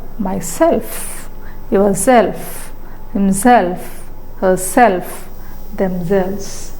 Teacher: the stress is on the suffix itself when self is added to pronouns.